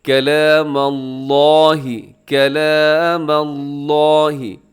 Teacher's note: اور کلام اللہ، لفظ اللہ کو اپنے موٹا پڑھنا ہے، لفظ اللہ کے نام سے پہلے میم کے اوپر زبر ہے، تو اسے آپ نے کلام اللہ، کلام اللہ، لفظ اللہ موٹا کیجیے گا۔